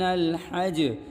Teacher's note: چونکہ وقفے کی صورت میں یہ جیم ساکن ہو چکی ہے اس لیے ہم قلقلہ کر رہے ہیں، لیکن جب ہم ملا کر پڑھیں گے تو اس وقت جیم میں قلقلہ نہیں کریں گے۔